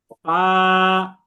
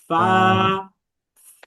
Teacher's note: উপরের দাঁত নিচের ঠোঁটের পেটের সাথে লাগবে।